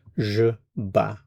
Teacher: So, for the je form it's ba. And we're not pronouncing the t or the s.